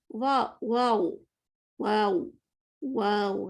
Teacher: زبان اوپر اٹھائی اور آگے سے بھی نیچے لے گئی, تو واؤ کو میں نے موٹا کر دیا